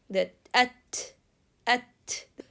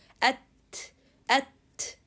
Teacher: The tongue with the gums is hitting each other, and that's why the sound is cut. At. So it's strength.